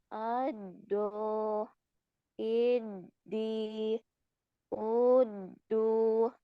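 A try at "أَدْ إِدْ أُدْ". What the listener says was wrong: Nah, masih kurang tebal ya.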